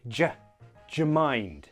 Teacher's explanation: to make it more natural sounding combine do you to sound like ja